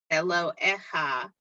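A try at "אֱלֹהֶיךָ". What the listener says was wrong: I want to hear the hey. Elohecha, right.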